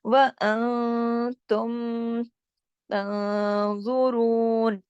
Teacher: وَأَنتُمْ تنظرون، اب دیکھیے نون ساکن پہ بات تا تھا، ہم نے اخفا کیا، آواز کو تھوڑا ناک میں لے گا. تم، تم پورے اظہار کے ساتھ ہم نے پڑھا کیونکہ آگے میم ساکن ہے اور میم ساکن کے بعد تا آ رہا ہے، تو یہ جو اظہار شفوی کا قاعدہ بھی اس کے اندر ہی لگ رہا ہے.